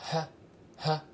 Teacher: Le H, aspiré léger.